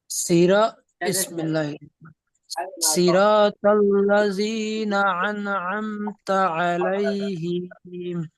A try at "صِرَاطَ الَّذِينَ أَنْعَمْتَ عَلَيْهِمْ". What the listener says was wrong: আলাইহিম বলে টান দিয়েছেন, টান হবে না, আলাইহিম, জলদি পড়তে হবে।